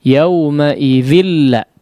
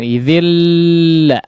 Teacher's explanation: nun sukun yang bertemu dengan huruf lam ya, tidak digunnahkan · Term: idgham bila gunnah